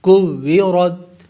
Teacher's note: اور آ کو پر کر کے پڑھیں گے اور واو پر ہونٹ گول ہوں گے. کوّرت مطہرتن سیرت، سین کو یا سے ملائیں گے کیونکہ یا مشدد ہے اور مشدد حرف دو مرتبہ پڑھا جاتا ہے.